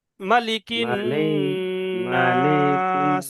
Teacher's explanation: কোনো জায়গায় টান হবে না, শুধু নুনটা টান হবে। আর নুনের তাসদিদ আছে, গুন্না হবে।